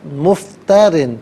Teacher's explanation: را کے نیچے 2 زیر کی تنوین باریک پڑھیں گے